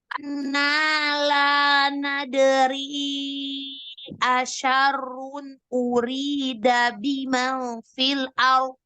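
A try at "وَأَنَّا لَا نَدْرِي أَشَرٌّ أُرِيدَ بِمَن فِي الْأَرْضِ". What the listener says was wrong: Ikhfa, selesaikan. Ikhfa, selesaikan. Asyarun, nun sukun, selesaikan. Jangan terputus. Huruf bot itu jangan kayak huruf dal ditebalkan, karena bot itu dia dua sisi lidah yang kanan dan kiri, ya, dua sisi lidah atau salah satunya bertemu dengan gigi geraham atas.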